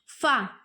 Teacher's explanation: نیچے کے ہونٹ کے گیلے حصے اور سامنے کے اوپر والے 2 دانتوں کے کنارے سے ادا ہوگا